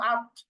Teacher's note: জিহ্বার আগা সামনের উপরের দুই দাঁতের গোড়ার সঙ্গে লাগিয়ে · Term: ত দাল তা